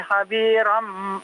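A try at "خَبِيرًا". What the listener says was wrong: iya bukan ha ya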